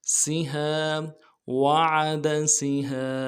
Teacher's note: سین کی سیٹی باریک ہوگی